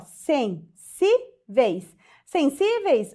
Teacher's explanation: Penúltima sílaba mais forte, terminada em ditongo, paroxítona, terminada em ditongo.